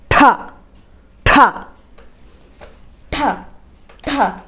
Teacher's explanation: ഠ ഠ ഠ ഠ അപ്പോൾ കുട്ടിക്ക് ശക്തിയോടെ ഉച്ചരിക്കുന്ന അക്ഷരമാണ് ഠ എന്നും ഠ എന്ന ശബ്ദം ഉച്ചരിക്കുമ്പോൾ വായിൽ നിന്നും ശക്തിയായി നിശ്വാസവായു പുറത്തേക്ക് വരുന്നു